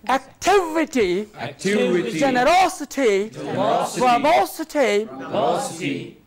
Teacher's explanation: It is the third syllable from the end that is to be stressed.